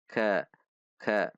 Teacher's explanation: Ka, perhatikan sifat dan makhraj huruf kaf. Ada sedikit dorongan udara saat mengucapkannya pada titik makhraj.